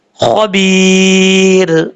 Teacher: را ساکن تو ہو رہا ہے لیکن پڑھیں گے بریک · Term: را بریک